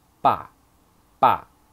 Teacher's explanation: Here it reads as the fourth tone.